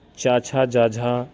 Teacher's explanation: ये तालव्य होता है और ये स्पर्श संघर्षी भी कहलाते हैं।